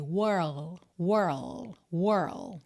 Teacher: world tá é tipo uma manobra de lngua mesmo World e depois você encerra com esse D que pode ser bem Sutil Lembrando que é uma consoante oclusiva